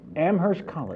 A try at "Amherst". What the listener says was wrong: Amherst College. The H is silent. Like the, yes, my mother always used to say, like the P in swimming.